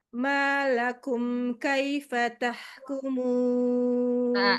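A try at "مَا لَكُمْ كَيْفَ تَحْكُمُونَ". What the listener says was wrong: Malakum. Kaifa tahkumun. Tinggikan lagi.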